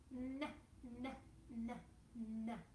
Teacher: It's our tongue tip touching the alveolar ridge, paired with some airflow going through the nose. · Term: n sound